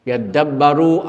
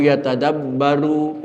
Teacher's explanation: fa udghimatil ta bidal, digomkan ta di dalam dal, maka dalnya timbul tasdid